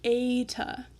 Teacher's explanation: adding the Y on the end of that E sound, and that's what makes it long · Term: diphthong sound